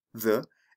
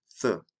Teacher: there are two TH sounds? The voiced TH, the, and the voiceless TH